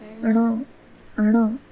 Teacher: जब आप ण इस वर्ण का उच्चारण करते हैं तब हमारी जीवा पूर्ण रूप से मूर्धा इस स्थान को स्पर्श करती है और वायु का जो कॉन्शियस फ्लो होता है उसे हमें अल्प रखना है, इसीलिए इसे अल्प प्राण वर्ण भी कहा जाता है। · हमारे मुख में इस वर्ण का उच्चारण स्थान मूर्धा है और हमें नासिका से भी इस वर्ण का उच्चारण करना है, क्योंकि यह एक अनुनासिक वर्ण है।